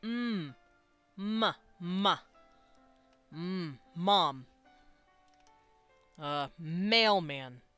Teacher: with your two lips you pronounce something nasal uh that turns into an m